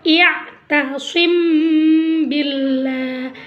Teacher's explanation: Cara membacanya harus samar-samar di bibir dan didengungkan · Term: ikhfa syafawi